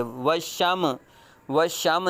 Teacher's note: میم ساکن ہے، ان میں قلقلہ نہیں ہونا چاہیے ، وشم، وشم نہیں کریں گے بلکہ میم میں واز ختم